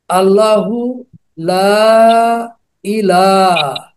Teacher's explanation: লাম আলিফে এক আলিফ টান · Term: বেসিক মাদ